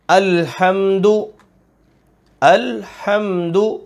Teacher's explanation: ہا حلق کے درمیان میں سے لیکن گلا نہیں گھونٹا جا رہا